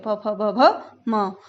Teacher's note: ओष्ठ यानी होठों का स्पर्श आपस में होता है